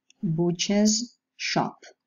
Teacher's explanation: When the voiced alveolar fricative comes into contact with a palato-alveolar fricative, it changes into a voiced palato-alveolar fricative sound.